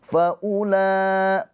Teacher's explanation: Maka ini mad wajib muttasil. Faula panjang empat atau lima harakat.